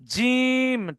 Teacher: জিহ্বার মাঝখান ও উপরের তালু হতে জিম উচ্চারিত হয়